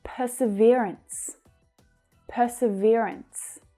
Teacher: That third syllable is the stressed one. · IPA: /ˌpɜː.sɪˈvɪə.rəns/